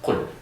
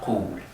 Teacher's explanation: we would say قُل short, with no long 'uu' sound . Just قُل, not قول. Notice though, that in any of